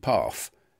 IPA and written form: pɑːf (path)